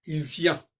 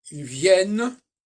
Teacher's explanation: Parce que dans il vient, le N est diphtongué, dans ils viennent, il ne l'est plus diphtongué.